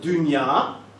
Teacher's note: the vowel in dünya is not really the same vowel you have in la. It's a much longer vowel. It's also a much fronter vowel.